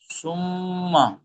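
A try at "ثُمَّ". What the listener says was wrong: মাশাল্লাহ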